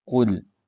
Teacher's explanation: اس کو موٹا کر کے پڑھیں گے، قلقلہ یہاں پہ نہیں کریں، قل قل نہیں کرنا۔